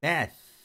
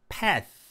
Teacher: 윗니빨과 아랫니빨 사이로 이렇게 혀를 내민 상태에서 바람이 지속적으로 옆으로 빠져야 됩니다. 그러니까 무성음 TH의 경우에는요.